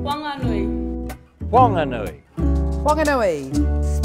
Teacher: In Whanganui, the H is aspirated, so it's not a wha, it's a wa.